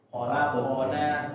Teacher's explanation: Di huruf qo ketika qalqalah jangan mirip atau jangan miring ke e ya tapi kayak membaca o biasa tapi pendek ya. Nah, jadi jangan ke e jangan taqwid ya khana khaqna tapi ke o ya khalaqona ya biar lebih bagus lagi insyaallah nanti akanallah fikus halo auzubillah irjim.